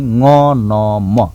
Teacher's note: अब नासिक्य भनेको चाहिँ ङ न म 3 वटा वर्ण छन्। यो चाहिँ सिधै नाकतिर सास जान्छ, ङ नाकपट्टि, म न नाकपट्टि सास जान्छ।